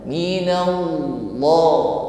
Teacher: Ya, jadi bibirnya tidak ikut, ya, menggunakan lisan. Sebagaimana huruf lam, tetapi bunyinya di sini tafkhim, tebal. Minallah, bukan minallah.